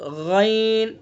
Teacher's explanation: غین کا مخرج ادنی حلق